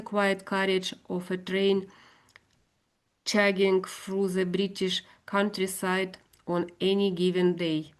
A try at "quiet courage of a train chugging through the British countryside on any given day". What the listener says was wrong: That's pretty well read, I think. But it's difficult, isn't it?